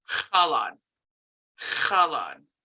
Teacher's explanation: the X wedge, which is like a raspy H.